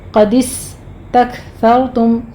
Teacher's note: سین پر ہمس ہوگا سیٹی کی آواز کے ساتھ، کاف پر ہمس ہوگا، سر میں را مفخم ہے.